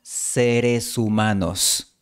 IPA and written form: 'se.ɾe.su'ma.nos (seres humanos)